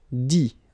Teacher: You don't pronounce the final T.